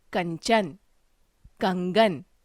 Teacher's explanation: इसके उच्चारण में नाक से ध्वनि निकलती है, जैसे कंचन, कंगन आदि। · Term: अनुस्वार